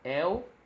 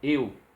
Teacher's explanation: El porque é aberto, o epsilon, e eu porque o eta é fechado.